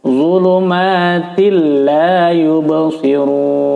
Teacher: hukumnya adalah idgham bila gunnah, bacanya dimasukkan tapi tanpa didengung atau ditahan. Langsung dhulumatil la yubsirun.